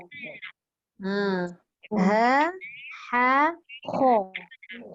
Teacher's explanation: Susunan dia begini Ha, bawah. Ha, tengah. Kha, hujung.